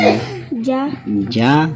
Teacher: Suara huruf jim tertahan saat disukun, lalu ada suara qalqalah setelahnya.